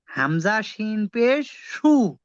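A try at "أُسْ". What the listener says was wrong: সু হবে না উস হবে উস হামজা সিন পেশ উস প্রথমে উচ্চারণ হবে উস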